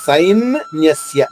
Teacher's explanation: సై దీర్ఘాక్షరము, న్యస్య హ్రస్వాక్షరం. సై పైన ఆఘాతం తీసుకుంటూ న్యాలోని నా ద్విత్వం చేసుకుంటూ అంటే 2 నాలు అవుతుంది.